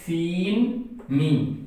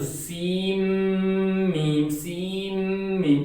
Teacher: جیسا کہ میں پڑھتا ہوں، کاف، ایک بہت اہم اور امپورٹنٹ بات یہ ہے کہ یہ طا سین اور میم، اس کے اندر اکثر لوگ جب اس کو پڑھتے ہیں تو اس کو پڑھتے ہیں سین میم، یعنی سین میم، تو اس طرح پڑھنا یہ غلط ہے۔ اس میں جو سین کے اندر جو نون کی آواز ہے وہ بالکل نہیں آئے گی، بلکہ وہ میم کے اندر مکس ہو جائے گی۔